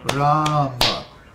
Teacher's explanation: Ram has a long A, and Ma has a short A.